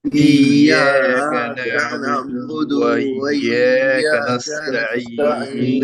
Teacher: بعض حضرات جو ہے دال کے بعد واو لگا دیتے ہیں، یہ چیز بھی غلط ہے